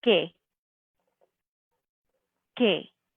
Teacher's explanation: You can hear how that U in the middle, we don't hear it when we pronounce it, really. It's just one sound, que.